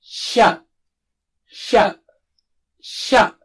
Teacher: the middle of the tongue is close to touching the palate or roof of the mouth when you say sha